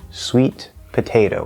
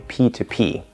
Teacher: that t is going to completely disappear and it's actually going to become a p but an unreleased p